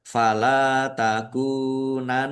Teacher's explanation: Nun tasdid bacaan ghunah atau mendengung. Ditahan biar tampak mendengungnya. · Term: gunnah